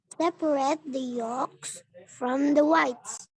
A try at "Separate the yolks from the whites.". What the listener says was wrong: Nah, yang ini bacanya separate. Separate. Ternyata selain silent L di sini ada juga yang ini. A-nya yang ini nggak bunyi. A yang ini deh yang nggak bunyi.